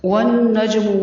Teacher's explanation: واو پر منہ کو گول کرنا ہے، نون مشدد ہے، غنہ ہوگا، جیم پر کلکلا